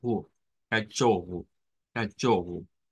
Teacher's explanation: Palabra con O, palabra que termina con O, que se pronuncia con U